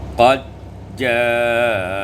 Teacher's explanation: diidghamkan dal pada jim menjadi qad ja'akum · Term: idghamud dal fil jim